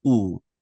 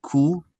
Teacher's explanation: So what the qaf comes from behind the uvula, where it's soft and meaty, and the kaf comes from in front of the uvula, where it's more solid. It's not really meaty, but it's a solid part.